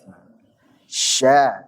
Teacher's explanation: syin tafasyi maknanya adalah intisyar Al intisyar intasaro yantasiru intisyaron menyebar jadi suaranya menyebar nih di sekitar mulut nabrak kepada gigi-gigi